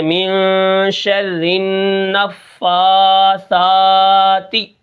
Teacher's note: سا کو بھی ایک الف کے برابر کھینچ کر پڑھیں گے